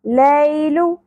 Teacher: یا ساکن سے پہلے زبر، حرف لین نرمی سے ادا کرنا ہے